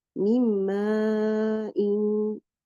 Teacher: Noon sakin followed by meme here. The noon has merged into the meme completely. And now you only hear the sound of the gunna of the letter meme.